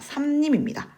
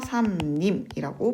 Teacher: 이 앞에 나와 있는 미음의 영향을 받아서 이 리을이 니은으로 바뀌기 때문이죠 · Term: 비음화